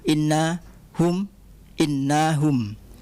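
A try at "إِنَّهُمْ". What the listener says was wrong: Innahum pendek nah.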